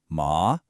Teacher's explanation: The second tone goes up like you're asking a question.